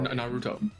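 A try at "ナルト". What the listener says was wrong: It's Naruto. No, you put the emphasis on the second. Naruto. Naruto is like the dubbed version, man. Naruto. That's how they say it.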